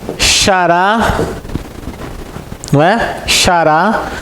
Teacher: Xará. A sílaba forte é a última. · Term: Oxítona